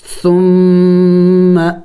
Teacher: دیکھیں ثا نرم حروف میں سے نرم پڑھیں گے اور میم مشدد ہے، میم مشدد پر ہم نے غنہ کرنا ہوگا